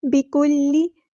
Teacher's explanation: کاف باریک ادا کرنا ہے